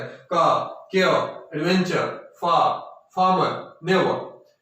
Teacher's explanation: और इसी तरह से कोई वर्ड जो एंड होता है आर से या आर से, तो वो भी वही है कि उसके अंत का जो आर या आर है वो ए में, स्लाइट ए में चेंज हो जाता है